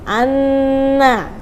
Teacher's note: Anna mengalir, nggak perlu ditekan, tapi didengungkan. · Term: gunnah